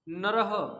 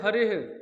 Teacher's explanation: विसर्ग कंठ से बोले जाते हैं